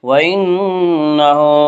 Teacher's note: نون مشدد غنہ ہوگا، غنہ کی مقدار 1 الف ہے۔ وَإِنَّهُ ہا کے اوپر الٹا پیش ہے، الٹا پیش قائم مقام ہے واو مدہ کے، اس لیے الٹا پیش کو 1 الف کے برابر کھینچ کر پڑھیں گے۔